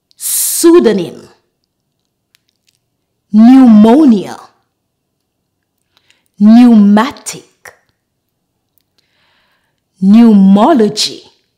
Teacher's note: the P at the beginning of the words are silent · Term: silent p